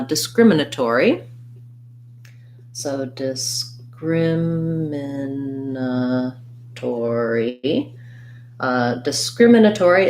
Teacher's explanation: discriminatory again second syllable stress